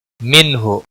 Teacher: نون ساکن کے بعد حروف حلقی کا ہا ہے اظہار ہوگا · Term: اظہار حلقی